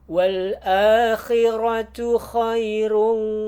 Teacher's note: kha usahakan dia kasar keluar dari tenggorokan bagian atas, kha yang kasar.